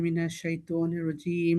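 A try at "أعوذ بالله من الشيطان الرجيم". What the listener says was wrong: শাই, শাই, নট শয়তান, শাই।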